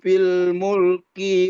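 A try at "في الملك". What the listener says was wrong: Mulki, kinya pendek.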